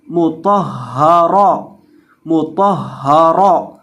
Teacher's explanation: طا کو موٹا کریں گے کیونکہ طا موٹے حروف میں سے ہے